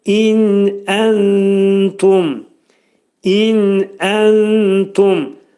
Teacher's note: Gördüyünüz kimi in dedikdə açıq nundur. İn burunda açıq şəkildə deyilir.